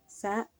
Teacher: Sa ujung lidah berada di antara dua gigi seri. Pengucapannya menyerupai suara burung.